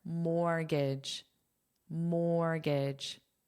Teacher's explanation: Well, this T is totally silent, but also notice how this is pronounced is not pronounced the way it looks because the sound is unstressed.